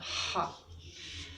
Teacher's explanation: one of the positions of the vocal cords was that of the vocal cords in friction, and it is there where this sound is produced, the sound ha.